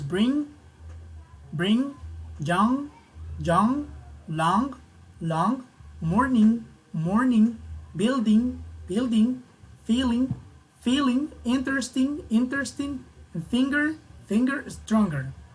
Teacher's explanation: the tongue is touching the roof as well a little bit, but it will be on the back. You will need to press, right, against the back, right?